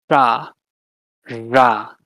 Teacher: the retroflex, so curling your tongue back